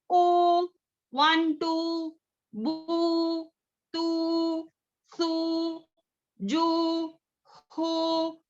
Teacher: اور واو ساکن سے پہلے ضمہ ہو تو یہ کیا ہوا؟ واو مدہ، مد طبعی. اور اس کو بھی 2 حرکت کے برابر ہم کھینچیں گے.